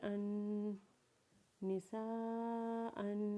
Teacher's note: حمزہ کے اوپر 2 زبر پڑھتے ہوئے حمزہ کے اوپر غنہ کریں گے اور وقف کے بعد حمزہ کو 1 الف کے برابر کھینچیں گے، جیسے نون زیر نی، سین الف مد زبر سا، نسا، حمزہ 2 زبر ان، نسا ان، وقف نساء۔